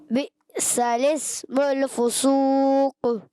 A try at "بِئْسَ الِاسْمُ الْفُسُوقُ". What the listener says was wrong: مول لام کو ہلائیں گے تھوڑا، کلکلا ہوگا، کلکلا ہوگا. کلکلا نہیں ہوگا، آپ نے ہلایا ہے. دوبارہ.